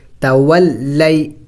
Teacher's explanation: لام اور یا ساکن سے پہلے زبر ہو تو وہ حروف لین ہوتا ہے، اور حروف لین کو جلد پڑھنا ہوتا ہے، تو اس کو لمبا نہیں کریں گے، کھینچیں گے نہیں، جلد پڑھیں گے.